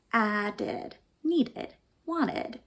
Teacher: And those have an ending that sounded like did, because we pronounce a D or a T, and then we pronounce the E, id, on that ending